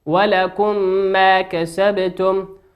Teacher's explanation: ميم ساكنة أتى بعدها حرف الميم، والميم حرف إدغام شفوي